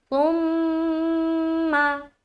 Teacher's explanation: तो यहाँ पर हम पढ़ेंगे सुम्मा, मीम के ऊपर शद है तो मीम मुशद्दद का गुन्ना करेंगे